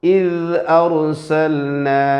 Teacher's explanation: ഇത് എന്ന് ദാലിന് ഖൽഖലത്ത് ഇല്ല എന്ന് ഉറപ്പുവരുത്തണം. ഇത് എന്ന് പറയാതെ ഇദ് അർസൽന.